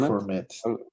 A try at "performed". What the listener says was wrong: Yeah, performed. Performed sería así como en español, pero la pronunciación es performed. Okay, con T, performed.